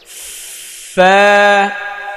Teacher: فا এটা নিচের ঠোঁটের পেট কিন্তু, হ্যাঁ এই ওপরের দাঁতের সামনের উপরে দুই দাঁতের আগা নিচের ঠোঁটের পেটে লাগাতে হবে